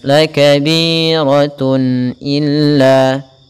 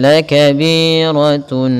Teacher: maka suara tanwin itu suara nun. Harus ditampakkan dengan jelas. La kabiratun illa, tidak boleh la kabiratun, tidak boleh kita tahan. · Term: izhar halqi